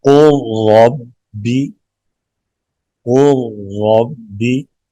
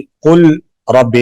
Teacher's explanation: لام ساکن آگے را متحرک، لام کو را میں مکمل طور پر داخل کریں گے۔ قربی، قل ربی نہیں پڑھیں گے، یہاں پہ ادغام کریں گے قربی۔